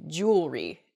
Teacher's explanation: we miss that that second e sound in there